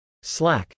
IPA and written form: slˈæk (slack)